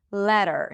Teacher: Okay, so now that we established that we eliminate the vowel before the R, there is no E, let's talk about the ER when it appears after a flap T. A flap T actually sounds like a D, as in the word letter. Letter. So it sounds like a D.